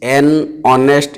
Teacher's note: we can notice that the sound H is silent in the word